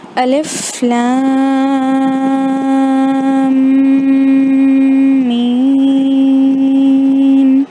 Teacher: یہاں پر غور کریں، الف کو میں نے ویسے ہی پڑھا، لام کو کھینچ کر پڑھا کیونکہ اس کے اوپر مد ہے، بڑی مد جو مد لازم ہے، خیال رہیں یہاں پر مد کو کھینچنا لازمی ہے، تو لام کو کھینچ کر پڑھا۔ · پھر لام اور میم کو ملاتے وقت بھی میں نے ناک سے گننا کیا، کیوں؟ کیونکہ میم شدہ ہے اور اگر آپ کو یاد ہو تو میم شدہ گننا ہوتا ہے ادغام میں سے، تو اس کو کیسے نیسل ساؤنڈ میں پڑھتے ہیں اور 2 سے 3 سیکنڈز تک کھینچا جاتا ہے، رائٹ؟